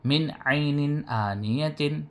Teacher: نون ساکن کے بعد حروف حلقی میں سے عین آیا، تو نون کو ظاہر کر کے بلا غننے کے جلد پڑھیں گے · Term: اظہار